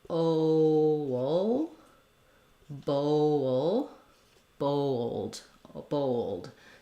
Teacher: oh if I'm going between the o and that dark l thinking about it as having a little bit of a schwa sound and a gliding wa sound might be helpful